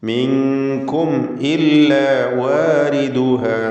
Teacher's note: സാക്കിനത്തായ മീമും ശേഷം ഹംസയും ഇദ്ഹാർ ഷഫവി മണിക്കാതെ വെളിവാക്കണം. മിൻകും ഇല്ല വാരിദുഹ, വ എന്നുള്ള ശബ്ദം ഞാൻ നേരത്തെ സൂചിപ്പിച്ചു, ചുണ്ടുകളിൽ നിന്ന് തന്നെ വരണം.